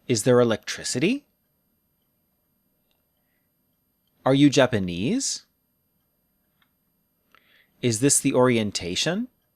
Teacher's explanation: yes no questions fall until the strongest syllable that syllable drops low and then we rise